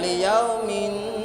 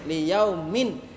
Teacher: N-nya itu harus terdengar jelas. Jangan campur g. Kalau kecampur g nanti jadi eng. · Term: izhar